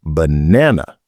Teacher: in the word banana, the stress is on the second syllable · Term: word stress